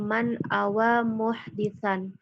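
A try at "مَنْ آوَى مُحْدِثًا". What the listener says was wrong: A-nya panjang. Man awa muhdisan.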